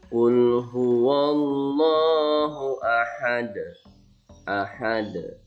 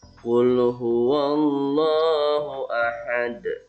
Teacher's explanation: menjadi betul kalau meskipun pantulannya kecil tapi ada suara qalqalah kubronya